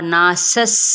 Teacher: سین کی زبر کو سین کے ساتھ ملائیں گے لیکن سیٹی واضح طور پر